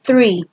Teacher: the manner of articulation is fricative this is because there is almost a closure but just not quite